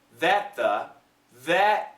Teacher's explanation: the T and the th are similar sounds so we connect and just keep the second one